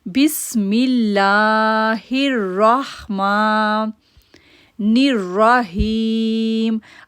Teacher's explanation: ہم پڑھیں گے بسم اللہ الرحمن الرحیم۔ اب را کو موٹا کر پڑھیں گے کیونکہ حروف مستعلیہ میں سے ہے، موٹے حروف میں سے ہے۔ دین ہم را کو موٹا پڑھیں گے، پھر ہم ہی کو کھینچیں گے، یا ساکن سے پہلے زیر ہے اس لیے 2 سیکنڈ کے لیے اس کو کھینچیں گے۔